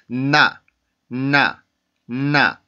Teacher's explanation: 시작 소리가 N 발음이죠. N 발음의 순수한 소리는 치조에 혀를 붙여놓고 그러고 나서 코를 울려주면 되는 소리입니다.